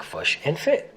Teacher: the kit foot vowels are reversed for the words fish and foot to sound like fush and fit